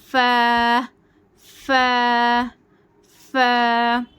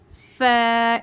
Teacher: اس کو فا باریک پڑھنا ہے. یہ حرف استفال ہے.